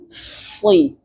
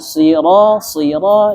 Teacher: Shad itu ada sifat yang namanya sofir, tajam. Si. Jadi jangan sira itu betul shadnya tapi sofirnya hilang.